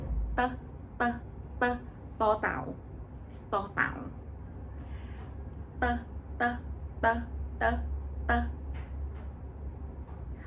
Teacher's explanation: So ต อ เ ต ่ า is kind of D and T together. So when you pronounce ต อ เ ต ่ า you have to use your tongue touch behind your teeth.